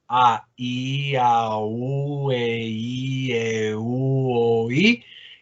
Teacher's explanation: aquí se suenan con una sola emisión de voz, aunque el sonido se identifican los dos sonidos. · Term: diptongos